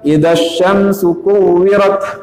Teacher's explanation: pelafalan huruf ta dalam keadaan sukun itu dengan udara murni